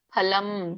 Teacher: ಫ ಅನ್ನಿ ಎರಡು ತುಟಿ ಮುಚ್ಚಬೇಕು